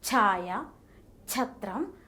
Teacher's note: The plosion takes place with an accompanying puff of air, making it an aspirated sound.